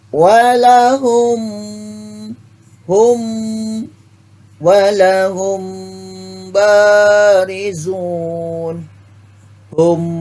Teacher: Cara membacanya samar. Makharijul huruf mim dan ba berada di bibir. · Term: ikhfa syafawi